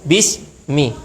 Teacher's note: Nah, kalau dia rakhawah kaidahnya adalah saat kita mensukunkan atau mentasydidkan huruf rakhawah jangan sampai putus suaranya. Jadi saat kita menyebut sin, saat kita menyebut sin suaranya tidak terputus sampai mim ya.